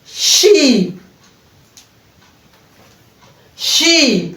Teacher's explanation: So, we are starting with e, it's a long vowel sound. As we pronounce this sound, the mouth is open and the lips are spread.